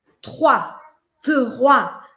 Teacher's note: Vou pedir para você fazer só o T. Aí o R, ele é lá atrás. Ele é um R gutural. Ele é aqui na minha garganta.